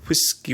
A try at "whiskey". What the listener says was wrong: Every word that has a WH in it, you pronounce with an HW.